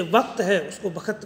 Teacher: जैसे वक्त है उसको बखत बोल दिया इन्होंने, यानी कि कह के स्थान पर ख का प्रयोग हो गया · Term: महाप्राणीकरण